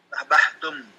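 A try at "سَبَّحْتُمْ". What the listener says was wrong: Tasdid. Tasdid. Nah, sabbahtum ya, baknya yang tasdid.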